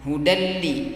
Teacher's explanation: Hudalli, enggak boleh hudanli, enggak boleh dibaca begitu. Langsung hudalli ya, tidak boleh didengung. Idgham bila gunnah.